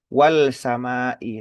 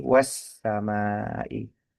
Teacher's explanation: Idgham artinya alif lam ini tidak dibaca lam sukunnya tidak dibaca secara jelas tetapi justru melebur gitu kan ya. Melebur menyatu dengan huruf sin di situ gitu. Jadi yang dibaca adalah bukan wal samai tapi wasamaai gitu ya. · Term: idgham syamsiyah